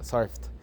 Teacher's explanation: surfed is pronounced with T because it ends in a soft sound